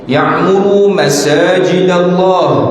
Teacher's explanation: Idgham ma'al gunnah ni maksudnya nun tu kita masuk ke dalam huruf ya dan kita dengung.